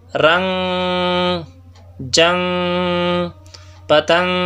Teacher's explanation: اس کا آسان طریقہ یہ ہے کہ زبان نہ اوپر تالو سے لگے نہ نیچے دانتوں سے، بلکہ زبان درمیان میں معلق ہو اور آواز ناک میں آئے، آواز ناک کے خیشوم سے نکلے۔ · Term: اخفا